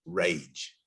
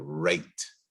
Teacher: the english r is deeper on your tongue it's a bit further back in your tongue